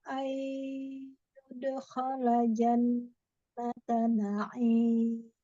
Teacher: durasinya harus lebih ditahan ya, lebih dilamakan. Kemudian agak disengaukan supaya dia masuk sedikit ke hidung ya. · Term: idgham bi gunnah